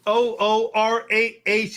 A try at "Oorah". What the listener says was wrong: You gotta say it with a little more oomph in it. You got emphasis on the ooh.